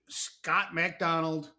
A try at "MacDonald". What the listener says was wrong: MAC. everybody says Mick, but it's Mac.